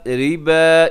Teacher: ربا اس میں را باریک ہے اور اس کے اوپر جو مد ہے یہ بھی چھوٹی مد ہے۔